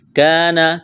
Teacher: کاف کو باریک کرنا ہے، الف مدہ ہے